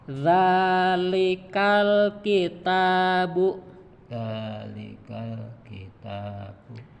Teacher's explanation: Mad panjang, tabi'i asli. 2 harkat, Pak, 2 ketukan. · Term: mad tabi'i